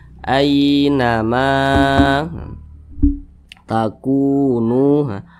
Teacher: ku dengan nu ini kedua-duanya dibaca panjang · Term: mad tabi'i